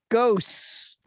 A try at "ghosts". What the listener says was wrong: There's no T in your version of ghosts. There's a little bit of a T in mine.